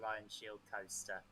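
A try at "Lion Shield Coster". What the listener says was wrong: Costa, but close. Coster. There's no A in it.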